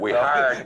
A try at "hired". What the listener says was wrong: You managed to put 8 extra syllables in a hired.